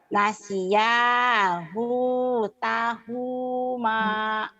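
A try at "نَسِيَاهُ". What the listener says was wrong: Hunya pendek. Nasiyahu tahuma.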